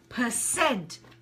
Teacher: with percent, the syllable stress is on the last part of the word